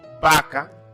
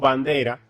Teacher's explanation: Por ejemplo, si decimos vaca, decimos bandera, nos damos cuenta que cuando hacemos mención de la va en vaca y la va en bandera, se produce un solo sonido